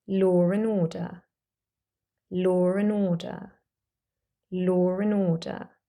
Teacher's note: A R sound has appeared between the word law and the next word and, although there is no letter R at all. This is an example of intrusive R, and we do this in some accents to link the two vowel sounds together.